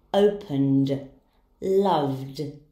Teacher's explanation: the ed ending will be pronounced as d, for verbs ending in voice sound.